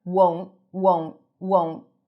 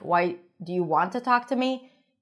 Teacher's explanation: Make sure you pronounce the long O sound. Otherwise, it might sound like want.